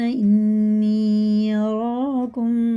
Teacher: نون میں شد ہے، غنہ کر کے پڑھیں گے · دیکھیں مد منفصل ہے، 5 الف 4 الف کے برابر کھینچ کے پڑھیں گے